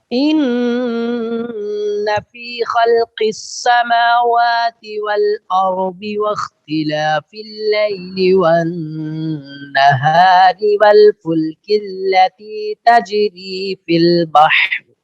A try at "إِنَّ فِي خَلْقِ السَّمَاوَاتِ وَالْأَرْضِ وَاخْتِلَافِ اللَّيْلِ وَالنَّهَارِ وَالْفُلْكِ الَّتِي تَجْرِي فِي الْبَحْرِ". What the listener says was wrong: ابھی بھی پورا پر نہیں ہوا قاف.